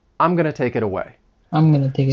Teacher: I'm going to reduce going to to gonna